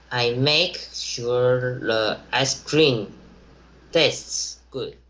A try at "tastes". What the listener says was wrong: You're saying tests. It should be tastes. A.